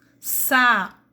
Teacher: o U também aqui será vogal porque ele tem som aberto, tem um som forte